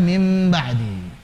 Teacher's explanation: Namanya iklab. Diubah nun ketemu ba diubah jadi mim. Jadilah mim ba'di.